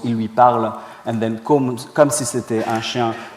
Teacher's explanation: these two elements, the main clause il lui parle and then comme si c'était un chien, are integrated in the same intonation unit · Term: prosodic integration